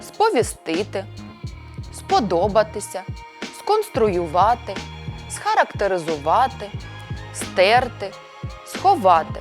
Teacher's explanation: якщо за ним ідуть літери к п т ф х префікс с вимовляється чітко